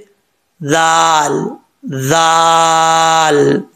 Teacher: जुबान की नोक ऊपर वाले दांतों के निचले हिस्से से लगे तो दल पढ़ा जाता है बगैर सीटी के